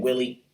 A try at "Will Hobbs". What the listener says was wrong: It's Will Hobbs, not Willie Hobbs, you fucking redneck.